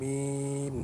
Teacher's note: মিম দুই টুটের শুকনা জায়গা হইতে মিম উচ্চারিত হয়